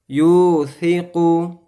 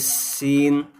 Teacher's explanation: ثا ہوتا ہے اس کے اندر سیٹی کی آواز نہ نکلے، اس کو جب پڑھیں گے تو ثا کے اندر سیٹی کی آواز نہیں آنی چاہیے